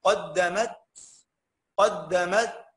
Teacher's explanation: المرء يوم يوم ينظر المرء ما قدمت يداه. اتفقنا التاء الساكنه تبقى مهموسه